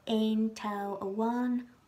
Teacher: Another quick exception is for S nouns after ein Instead, S becomes TS and just the T is pronounced